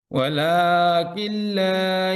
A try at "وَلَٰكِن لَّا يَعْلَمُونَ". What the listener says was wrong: এখানে ওয়ালাকিন লা এভাবে বলবেন না। কিল্লা একসাথে না, ওয়ালাকিন লা ইয়ালামুন এর মাকতু করবেন, ভেঙে পড়বেন। ওয়ালাকিন লা একসাথে না, ওয়ালাকিন লা এভাবে না, ওয়ালাকিন লা ইয়ালামুন।